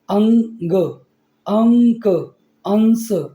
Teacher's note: अनुस्वार के उच्चारण में नाक से अधिक सांस निकलती है और मुख से कम निकलती है